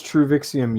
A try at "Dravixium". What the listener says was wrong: It's pronounced with a D. It's Druvixium.